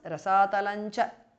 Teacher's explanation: Rasatalam ends in Anuswara followed by Cha. So it becomes Rasatalancha. Anuswara changes to Nya, which is a nasal of Chavarga.